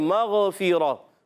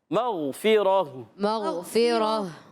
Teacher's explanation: میم کو غین سے ملانا ہے، غین کو ہلانا نہیں، غین موٹے حروف میں سے، حروف مستعلیہ میں سے موٹا پڑھیں گے